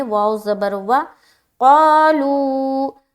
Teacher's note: واو زبر وا کھینچیں گے نہیں، بالکل جلد پڑھنا ہے